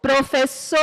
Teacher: Na palavra professor, a sílaba que é pronunciada com mais força é a sílaba so. Professor, eu vou perceber que a sílaba mais forte, quando eu falo a palavra professor, é a última sílaba. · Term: sílaba tônica